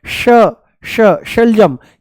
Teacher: ये क्या है श, श शलजम, ये आपको तालू में महसूस होगा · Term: तालू से श